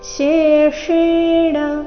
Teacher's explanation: ಮೊದಲು ತಾಲವ್ಯ ಶಂತರ ಷಟ್ಕೋನ ಷ ಒಂದಾದ ನಂತರ ಇನ್ನೊಂದು ಬಂದಿದೆ